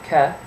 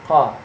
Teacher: But there's also another sound, which is represented by the Q. It's just like a K, but you pronounce it in the back of your throat. So instead of your tongue hitting the roof of your mouth, K, it hits the back of your throat.